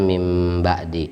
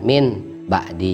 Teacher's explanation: Suaranya n hilang jadi m. Bukan hilang, diganti. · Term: Iqlab